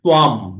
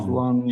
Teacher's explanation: এখানে অনুস্বরটা অং না হয়ে ম উচ্চারণ হবে